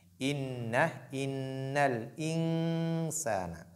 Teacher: Inna, nun mushaddada, donc il faut faire apparaître donc ce qu'on appelle la ghunna, la nasalisation, qui est ce son qui sort au niveau du nez, donc de la cavité nasale, donc au niveau du nez.